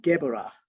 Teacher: a b in the middle of the word is pronounced v